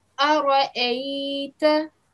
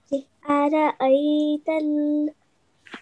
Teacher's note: So this time you didn't give the sound from the middle of the throat, which is good because this is not an ayin, it's just a simple hamza.